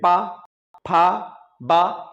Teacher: ठीक है, अब जैसे पा वर्ग में, तो पा वर्ग में हम होठों से टच कराते हैं, जैसे पा, फा, बा, इसमें दोनों होठों को स्पर्श कराएंगे तभी इनका उच्चारण होगा